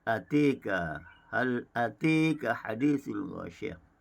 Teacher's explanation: bagi kalimah atika, bagi bacaan qiraat Hamzah, khalaf dan khalat dibaca dengan imalah.